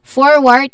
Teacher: It has a stress on the first syllable with a longer or sound.